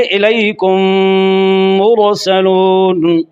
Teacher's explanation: پہلا میم دوسرے میم میں مستقل طور پر داخل ہو رہا ہے، مکمل داخل ہو رہا ہے ، اس لیے اس کو تام کہتے ہیں۔ عربی میں تام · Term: ادغام تام